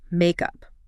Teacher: And critically, the stress is on the first syllable.